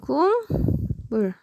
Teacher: 기역이라고 하는 비음이 아닌 것이 미음이라고 하는 누구를 만나? 비음을 만나서 얘가 이응이라고 하는 비음이 된 것이죠. 그래서 즉 기역이 이응으로 변하게 된 거죠. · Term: 비음화